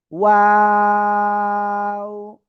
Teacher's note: দুই ঠোঁট শুরুতে গোল হবে, মাঝখানে দুই দিকে প্রসারিত হবে, শেষে এসে আবার গোল হবে